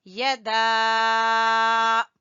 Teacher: دال کو ہم کھینچ رہے ہیں، مد ہے یہاں پر، مد جائز اس کو بولتے ہیں